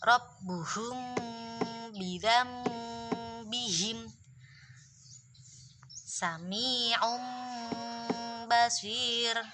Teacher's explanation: ketika ada mim sukun bertemu ba, maka dibaca mendengung.